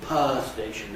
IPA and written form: ˋpaə steɪʃn̩ (power station)